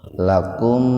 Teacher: Lakum idhar safawi, mim mati ketemu ain secara terpisah, jadi betul-betul mimnya dibaca jelas di bibir